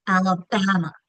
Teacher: I hear the schwa at the end of Alabama.